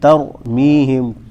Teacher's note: تا کو باریک پڑھنا ہے اور را کو موٹا